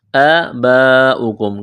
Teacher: آباؤکم کڑا زبر ہے، ایک الف کے برابر کھینچنا ہے، یہ لمبی مد ہے، 4 الف کے لمٹ میں کھینچنا ہے